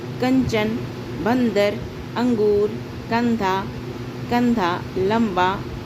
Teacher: तो अनुस्वार का उच्चारण जो है केवल नासिका से होता है। नासिका मतलब नाकों के द्वारा होती है।